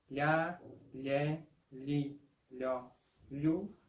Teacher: es un sonido que es como si fuese una LI junto con la próxima vocal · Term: dígrafo LH